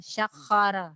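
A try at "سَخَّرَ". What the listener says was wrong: Mirip gini. Kho itu kan gin yang dilembutkan. Sagoro. Itu goro ya. Sagoro. Jadi kotor. Sakhara. Sagoro. Sakhara. Jangan ada kaknya. Sakhara ya. Ya, sakhara. Subhanalladzi sakhara lana hadza.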